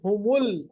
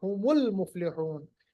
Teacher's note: میم کو لام کے ساتھ ملایا, جو بیچ میں الف ہے نا یہ اصل میں حمزۃ الوصل ہے